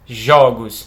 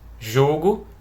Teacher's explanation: A gente tem uma diferença aqui de vogal aberta e fechada.